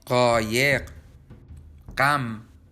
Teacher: Traditionally, these were different sounds, and qain was pronounced gha, but the two sounds have mostly merged. This is like the French J sound, je.